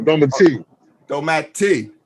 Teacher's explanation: the emphasis has to be on the last syllable